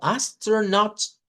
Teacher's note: Esto lo puede sonar como astronaut, como una o corta, como en el caso del inglés británico